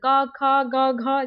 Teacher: प फ जो कि हमारे लिप ओष्ठ में मिलन होती है, वो प फ होता है, ठीक है, वो प वर्ग में आता है। क ख कंठ्य ध्वनि हो जाती है